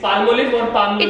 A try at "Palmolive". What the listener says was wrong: It's not palmolive, it's palmolive. L is silent.